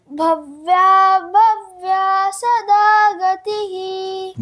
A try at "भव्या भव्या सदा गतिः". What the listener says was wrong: बहुत बढ़िया, ऐसे ही उच्चारण करना है।